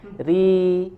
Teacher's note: huruf ra dibaca dengan tipis di sini karena harokatnya kasroh